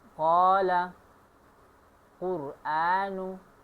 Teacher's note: मखरज काफ का है और काफ अदा होता है जुबान के सबसे आखिर वाला हिस्सा जो ऊपर की नरम तालु से मिल जाए तो वहां से कौफ अदा होता है। जैसे कि काला कुरानु बहुत से लोग काफ को काफ बोलते हैं जो कि बहुत बड़ी गलती है और इसी बड़ी गलती को लहने जली कहते हैं।